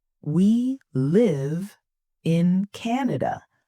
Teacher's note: >> Let's start with falling intonation. This is when your voice goes down at the end of a sentence. It's like walking down a small hill. It goes from high to low.